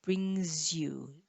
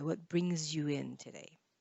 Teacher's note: the s joins to the y